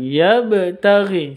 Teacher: ada ba sukun di sini, qalqalah sughra, dipantulkan, bacaannya dipantulkan